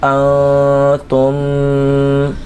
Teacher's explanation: ان والے غنّے کو ناک میں لے کے جائیں گے، اور تا میم پیش تم میں میم کی آواز کو تھوڑا سا لمبا کر کے کھینچ کر پڑھیں گے تو یہ غنہ ہو جائے گا۔